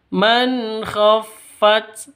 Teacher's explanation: harus ada hemesnya karena ini huruf hemes ya harus ada nafas yang keluar dikit.